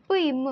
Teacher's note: மேலிதழும் கீழிதழும் பொருந்துவதால் நம்மளுக்கு பிறக்குது